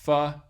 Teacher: it's a constriction between the lower lip and the upper teeth and then you just kind of push air in between that narrow constriction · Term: labial dental sound